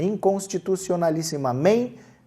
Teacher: ela é paroxítona, porque a penúltima sílaba é a mais forte. Se for oxítona, a última é a mais forte.